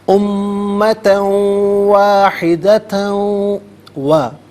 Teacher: دونوں مقامات پر دو زبر کی تنوین کو واو کے ساتھ ملا کر واو کی آواز کو غننے کے ساتھ ادا کریں گے. یہاں یرملون کا قاعدہ اپلائی ہوگا.